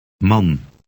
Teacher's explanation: A in Man. has an ah sound, as in father, but shorter.